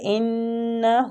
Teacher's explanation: انہ، نون مشدد غنہ کریں گے، ہو الٹا پیش ہے، اس کو بھی تھوڑا سا کھینچیں گے